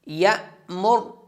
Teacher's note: را کو موٹا کر کے پڑھیں گے